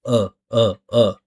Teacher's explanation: it's neutral, right? Uh uh uh. There's no shaping or forming of the mouth, and it's just a sound resonating the body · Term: schwah